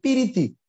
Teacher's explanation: তাহলে এই যে প্রীতিকে পিরিতি উচ্চারণ করছে, এখানে মাঝখানে একটা স্বর এসেছে।